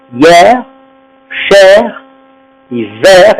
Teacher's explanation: Quand c'est un monosyllabe, on prononce le R et le E ouvert.